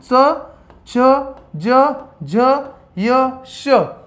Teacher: कठोर तालूला लावलं बरोबर, म्हणजे तालूला लावून ज्यावेळेस जिभेचं पातं तिथं भिडतं त्याला आपण तालव्य वर्ण म्हणतो.